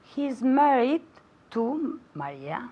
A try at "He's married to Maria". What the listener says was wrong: Now, la S mosca en his, no la he oído. I didn't hear it.